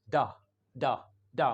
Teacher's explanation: आ sound. And it is very short. और इसको कहते हैं श्वा साउंड.